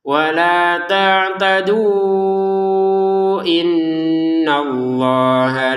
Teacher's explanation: Karena belum gabung sama Hamzah. Kalau menggabungkan tak tadu dengan inna, barulah kita panjang lima harakat.